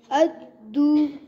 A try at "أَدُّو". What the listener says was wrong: अद्दू दू पढ़ेंगे तो ये वो मध्य सगीर हो जाएगा 1 काउंट रखे 2 काउंट नहीं बनाना अद्दू गलत अद्दू सही है दाल को प्रेस करें